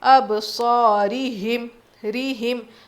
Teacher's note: را باریک ہوگی، مجہول نہیں معروف پڑھیں گے. اب صارہم ایسا نہیں پڑھنا.